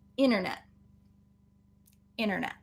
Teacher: if it's in the middle of a word then we have cases where the t will get deleted the t will be silent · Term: silent t